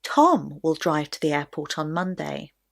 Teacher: But if the question that comes before is who is going to go to the airport, the stress will naturally be on the word Tom. So Tom will drive to the airport on Monday. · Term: sentence stress